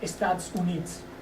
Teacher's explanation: This is a phenomenon quite common in the Andes. So in the Andes, we can see that vowels tend to be weakened to a great extent. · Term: unstressed vowel reduction